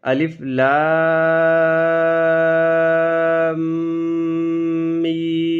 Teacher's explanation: ہم نے میم کو مشدد ہونے کی وجہ سے غنہ بھی کر دیا ہے، اور مد آنے کی وجہ سے لمبا بھی